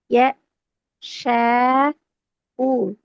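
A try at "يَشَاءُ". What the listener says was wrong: யஷா அல்ல. யஷ. உ. ஷே தான் வரணும். ஷாக்கு போகக்கூடாது. யஷா.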